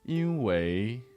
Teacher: Sometimes tones change. This specific word, 因 为, is often pronounced 因 为 with a second tone.